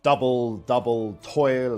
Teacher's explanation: the two syllable long troche a stressed syllable followed by an unstressed one